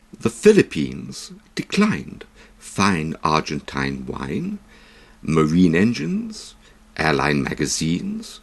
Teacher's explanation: Note particularly the stress. INE endings that are stressed all have long I sounds, the short I1 sound being confined to unstressed endings